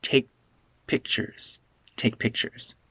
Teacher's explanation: this is unreleased my tongue is in the position for K but it doesn't release the sound